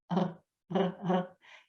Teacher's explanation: c'est comme si on se raclait la gorge. Je ne sais pas, vous savez quand, par exemple, on prend une mixture ou une tisane avec les herbes quand on a mal à la gorge, des fois on fait ça pour que le mal de gorge passe. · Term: le r français